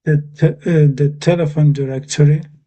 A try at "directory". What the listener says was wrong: Yeah, directory. I think you had the I sound wasn't quite there. You're just saying doing a bit too long, I think. Direct. Yes, directory.